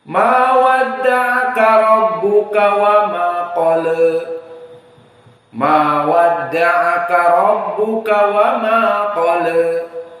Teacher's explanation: dia 60 derajat, tidak sampai kepada vertikal fathah. Dari 0, dari horizontal hanya 60, ini taklil. Dan dinamakan taklil maknanya kurang dari fathah.